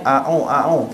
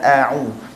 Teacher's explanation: Pertama, masa kita sebut a'u, mulut kita nak muncung.